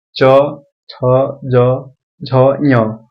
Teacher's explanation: जब आप इन सभी वर्ण का उच्चारण कर रहे हैं तो इसकी ध्वनि तालू से निकल रही है इसलिए च वर्ण का उच्चारण स्थान तालाब हो जाएगा ठीक है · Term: च वर्ग